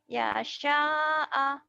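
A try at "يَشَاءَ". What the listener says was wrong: Ya sya'a, nggak ada panjang. Ya sya'a. Ya sya'a.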